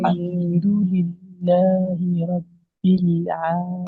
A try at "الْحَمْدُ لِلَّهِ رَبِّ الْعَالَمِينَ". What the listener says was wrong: الحمدو نہیں کرنا، الحمدو، دال پیش دو، دال پیش دو ہوتا ہے، دو، للہ،